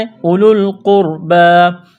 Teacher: اولو القربى، قاف را پیش، قربہ کڑا زبر با، قربہ قاف کو موٹا کرنا ہے، را ساکن سے پہلے پیش ہے، را کو موٹا کریں گے، با کو ایک الف کے برابر کھینچنا ہے